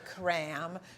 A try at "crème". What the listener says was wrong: so you got to roll your R.